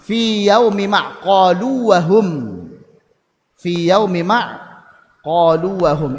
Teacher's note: Qolu wahum wau maddiyah ketemu wau ghairul maddiyah. Maka ini tidak dibaca dengan idgham. Dibacanya dengan ibanah dengan izhar dengan jelas. Kenapa? Karena beda makhraj.